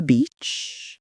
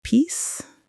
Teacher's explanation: they're made with the front part of the tongue raised high in the mouth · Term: two front high vowels